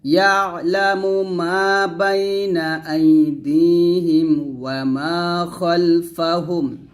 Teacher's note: খালফা বলবেন না খ মোটা করে